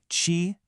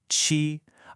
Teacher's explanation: Hold your hand about an inch from your mouth and say chi. You should feel a distinct puff of air hit your palm. That's aspiration.